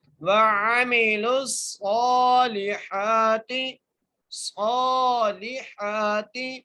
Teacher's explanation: لام کو صاد سے ملانا ہے، صاد کو موٹا کر کے پڑھنا ہے، ایک الف مقدار کھینچ کے پڑھنا ہے ، لام کے نیچے زیر ہے اور آگے ہا ہے، یہاں